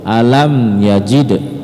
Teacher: alam mim mati bertemu dengan huruf ya ya maka dia disebut izhar syafawi tidak dengung tidak boleh dengung